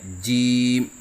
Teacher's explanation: زبان کا بیچ جب اوپر تالو کے درمیان سے لگے تو اس سے جیم ادا ہوتا ہے، جیسے کہ آپ کو اس نقشے میں نظر آ رہا ہے کہ زبان کا بیچ اوپر کے تالو سے لگا ہوا ہے۔